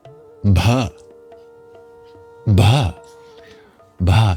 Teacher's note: It's a breathy B.